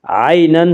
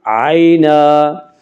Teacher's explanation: 2 زبر پر جب وقف کرنا ہو تو ایک زبر کے ساتھ الف پڑھا جاتا ہے، عینن سے عینا۔